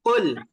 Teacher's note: জিহ্বা গোড়া থেকে যদি না বলেন সেটা কিন্তু কাফ হয়ে যাবে, আর যদি কাফ হয়ে যায় তাহলে কুল উচ্চারণ হবে, আর এই কুল উচ্চারণের অর্থ হয়ে যায় তুমি খাও।